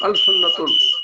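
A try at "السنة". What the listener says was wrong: तो लाम जो है ये साइलेंट रहेगा यहाँ भी। अस सुन्नतु, ठीक है, अस सुन्नतु।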